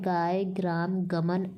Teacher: इसे घोष अल्पप्राण कंठ स्पर्श कहा जाता है।